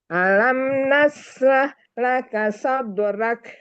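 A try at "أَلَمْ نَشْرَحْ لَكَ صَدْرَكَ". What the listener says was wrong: Roknya bisa rok Bu, coba rok, jangan ra. Kita belajar rok gitu.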